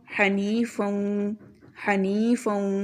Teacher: یا ساکن سے پہلے زیر ہے، اس کو لمبا کریں گے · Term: یا مدہ